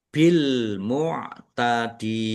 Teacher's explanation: Tetapi karena di akhir kata maka menjadi mad arid lisukun. Dibaca panjang boleh enam, boleh empat, boleh dua harakat